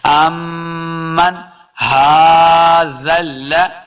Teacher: ہا کے اوپر کھڑی زبر ہے، اس کو دو حرکات لمبا کریں گے · نون ساکن کے بعد ہا حروف خلقی سے ہے، بغیر غنہ کے پڑھنا ہے